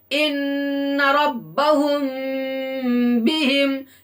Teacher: اخفاء شفوی اس کو کہتے ہیں کہ میم ساکن کے بعد با آئے تو غنہ کے ساتھ اخفاء ہوگا